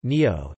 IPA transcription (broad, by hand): ˈniɲoh